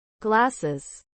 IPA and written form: ˈɡlæsɪz (glasses)